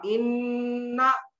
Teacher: नून मुशद्दद और मीम मुशद्दद में गुन्ना होगा। · आवाज को नाक में ले जाकर घुमाना उसको बोलते हैं गुन्ना